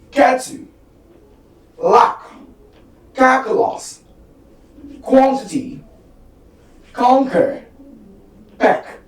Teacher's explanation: We have voiceless velar plosive.